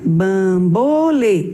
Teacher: Sua sílaba mais forte é o lê e ela está na última posição.